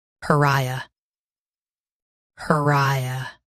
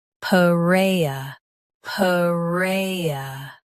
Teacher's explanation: US starts with per. UK adds puh first.